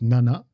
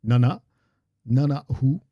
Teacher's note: the word for sister is Nana, and there's a little push at the end. There's a glottal stop.